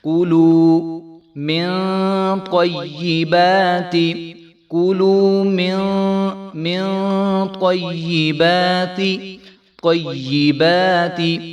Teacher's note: پہلے جو ہے قا ہے تو اس کو خوب موٹا کر کے پڑھیں گے